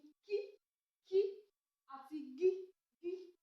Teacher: Afàfàsépè, afàfàsépè ní ìró tí a pè nígbà tí ẹ̀yìn ahọ́n tí ó súnmọ́ bá àfàsé